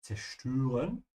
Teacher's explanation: Remember to pronounce the Z in German with a TS sound